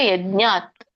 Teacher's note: ಅ ಸ್ವರ ಬರಂಗಿಲ್ಲ ಯಜ್ಞಾತ್ ವ್ಯಂಜನ ಹೇಳಬೇಕು